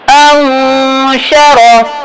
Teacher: اب نون ساکن ہے, ہم نے کیوں غنہ کیا, آواز کو چھپایا کیونکہ حروف حلقی میں سے کوئی حرف نہیں ہے, شین ہے